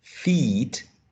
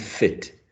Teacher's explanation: the first one the vowel sound is longer than in the second example e this one is longer this one is shorter so we